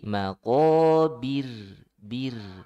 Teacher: Jadi kalau ro sebelumnya kasroh ditipiskan. Ya, ro sukun sebelumnya kasroh tipis.